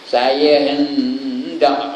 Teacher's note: hendak ikhfa tu, nun mati jumpa dengan dal.